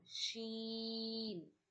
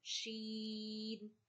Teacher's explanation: Middle of your tongue, middle of the palate.